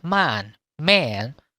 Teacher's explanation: Cái miệng nó vẫn to. Đọc e nhưng miệng vẫn to. Như là man.